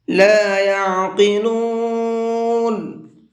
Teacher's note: اس بڑے قاف کو پر کر کے پڑھیں گے